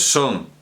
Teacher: son es una palabra acentuada tiene su acento en la última sílaba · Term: palabra aguda